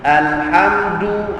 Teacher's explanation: Dal Melayu lidah jauh pada gigi maka akhirnya dengar keras sikit